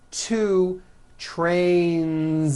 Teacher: So you've got one train or two trains. Two trains with a voiced Z ending.